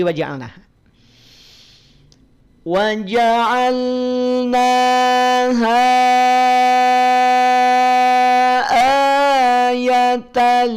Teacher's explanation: ha mad asli bertemu dengan Hamzah dalam kalimat yang berpisah ya asalnya dua harakat seperti saat kita baca waqaf namun saat wasal karena dia berjumpa dengan Hamzah di lafaz ayatan